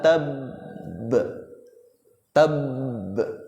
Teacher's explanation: harus di double dulu, ditekan dulu baru bunyikan qalqalanya